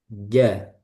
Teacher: Jadi kebalikannya hamas. Jadi dia jahar, tertahan udaranya. Jadi bukan jah tapi ja.